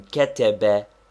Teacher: if all the vowels are short as in ketebe the first one is slightly accented